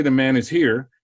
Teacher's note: So when I say the man is here, here has a falling and a higher tone.